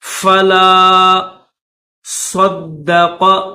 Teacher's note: صاد کو دال کے ساتھ ملا کر پڑھیں گے، دال کے اوپر تشدید ہے تو اس کو دبا کر سختی کے ساتھ پڑھیں گے۔